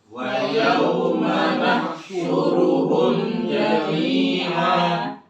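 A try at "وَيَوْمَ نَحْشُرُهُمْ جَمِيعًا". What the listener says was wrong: Ya, tadi masih ya humja, nggak usah ditahan, humja ketemu jim.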